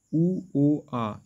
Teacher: জিহ্বাটা একদম পিছন দিকে থাকছে, আ থেকেও পিছিয়ে, আর সময় যে অবস্থানটা ছিল তার থেকেও পিছনে, তখন এর নাম হচ্ছে কি পশ্চাৎ স্বরধ্বনি।